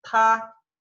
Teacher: Fíjense que es como una T, pero expulsando aire.